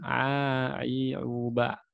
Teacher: Ain di tenggorokan saja, jangan pakai hidung. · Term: huruf ain